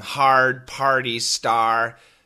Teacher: in proper English the sound R is silent in all these words